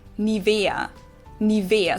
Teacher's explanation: So the emphasis is on the E.